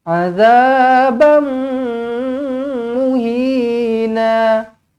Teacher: Kena rapatkan bibir, sentuhkan bibir atas dan bibir bawah, dengungkan dengan dua harakat idgham ma'al gunnah di sini.